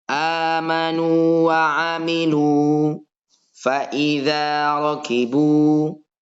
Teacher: bacanya juga harus dibaca panjang suaranya. Suara dhammahnya itu 2 harokat. Harokat di nun dan 1 harokatnya di wawu ya.